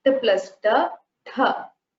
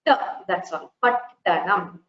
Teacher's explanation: There is no air or breath coming out of the mouth when you combine the two takaras. You just have to stress the takaras a little more in order to show that there are two.